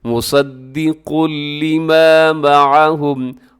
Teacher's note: इदगाम कीजिएगा लेकिन बगैर गुन्ने के, ज़रा सा भी आवाज़ को नाक में नहीं लेके जाइएगा। मुसद्दिक़ुल लिमा मअहुम, कुल लिमा पे कौफ को अपने मोटा पढ़ना है, इसे बारीक नहीं करना।